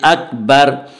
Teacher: علامت ہے، یہاں پہ ضرور وقف کرنا ہے، ٹھہرنا ہے، اور وقف کی صورت میں را کے اوپر پیش ہے، را کے پیش کو جزم سے بدل کر پڑھیں گے